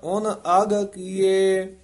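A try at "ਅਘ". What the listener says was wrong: अग नहीं कह जाना, एड़ा घग्गा अग पापां दा वाचक है, ते उन नहीं कह जाना, उन भोला बोलना।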